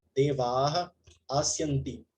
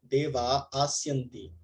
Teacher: Quando uma visarga é precedida por A e seguida por ash, que é o pratyahara, que corresponde a todas as vogais e consoantes sonoras, a visarga some. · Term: Elisão da visarga